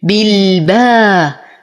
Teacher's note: ارقق الباء اعطي المد الطبيعي بعدها حقه